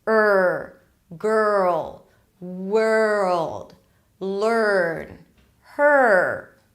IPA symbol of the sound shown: ɜr